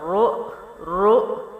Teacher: پیش ہے، را پیش حمزہ رو، را موٹا ہوگا، حمزہ موٹا نہیں ہوگا